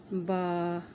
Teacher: یہ دونوں ہونٹوں کے ملانے سے با ادا ہوگا، یعنی ہونٹوں کا جو تر حصہ ہو وہ آپس میں ملے گا تو با ادا ہوگا، با۔